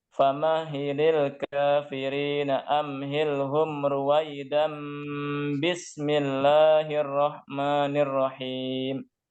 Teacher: Nah, itu maksudnya kalau kita sambung dengan bismillah di surat bawahnya. Jadi kalau disambung, maka dia hukumnya menjadi iklab. Karena tanwin bertemu dengan ba di kata bismillahirrahmanirrahim. Jadi aslinya di akhir surat itu ruwaidan, aslinya dengan tanwin.